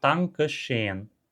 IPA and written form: taŋkə ʃeːn (Danke scheen)